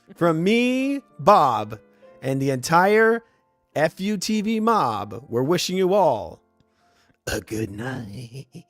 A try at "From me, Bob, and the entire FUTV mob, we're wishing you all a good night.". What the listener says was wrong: A little bit weird, but, better. Still too many syllables. Good night.